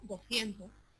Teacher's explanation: Por ejemplo, en 200 pronuncia, como yo estoy diciendo ahora, 200. No pronuncia esa S implosiva de 200.